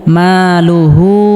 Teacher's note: টেনে পড়তে হবে। লাম পেশ লু হা উল্টা পেশ হু মালুহু এখানে হা এর উপর উল্টা পেশ থাকার কারণে এক আলিফ পরিমাণ লম্বা করে টেনে পড়তে হবে